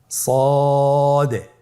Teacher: জিহ্বার আগা সামনের নিচের দুই দাঁতের পেট ও আগার সঙ্গে লাগিয়ে উচ্চারিত হয়। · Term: সদ